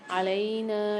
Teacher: علینا لام کے ساتھ یا ساکن ہے، نون کے ساتھ الف ہے، تو یہاں پر ایک ایک الف کی مقدار لام اور نون کو کھینچ کے پڑھیں گے